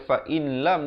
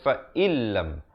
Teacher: nun mati bertemu lam, idgham bila gunnah, masuk tanpa dengung. Asalnya fa in, tapi jangan kita baca fa in lam di sini, salah, dia kena baca fa illam.